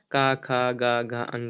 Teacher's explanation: जिन व्यंजन ध्वनियों के उच्चारण में जीवा के पिछले भाग से कोमल तालु का स्पर्श होता है कंठ ध्वनियां कहलाते हैं। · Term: कंठ व्यंजन